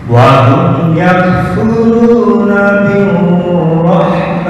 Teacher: Kepanjangan ru karena wasal hanya 2 harokat.